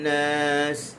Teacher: waquduhan nun bertasydid, gunnah dua harakat.